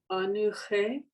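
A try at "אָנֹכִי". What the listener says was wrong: What's the vowel on the nun? Anu. What's the vowel on the under the ha?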